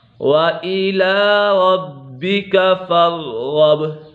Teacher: غین حرف مستعلیٰ میں سے ہے اور با کے اوپر قلقلہ ہو رہا ہے۔